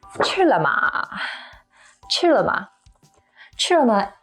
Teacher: to eat is the first tone high and flat and la ma they are both neutral tone which means there's · la ma they are both neutral tone which means there's no stress so you say it quick and kind of quiet